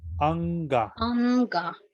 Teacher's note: N la pronuncias desde la garganta. Como que cierras la garganta. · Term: La N gutural